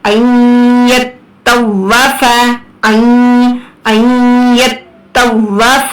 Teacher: نون ساکن ہے، تو نون کو ہم نہیں پڑھیں گے، ہم حمزہ کو یا سے ملائیں گے، ٹھیک ہے، اور یہاں پر ادغام بدغنہ ہوگا